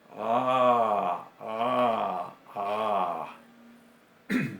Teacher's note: Ain, que es una fricativa uvular sonora o glotal sonora. · Hacemos como si fuéramos una vocal A y detrás constringimos la garganta.